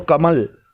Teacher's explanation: जैसे कि कमल, क म पूरा निकल रहा है। लेकिन जब ल बोलेंगे तो कमल, तो आप अनुभव करेंगे कि जो ज़ुबान है वो ल में ऊपर वाले तालू से चिपक कर रह गई है।